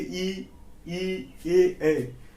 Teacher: जो जीभ के आगे भाग से बोले जाते हैं उसे अग्र स्वर कहा जाता है।